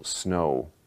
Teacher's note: in most varieties of American English, the O is a diphthong. So you say, for example, snow, and it's really more like a O, W.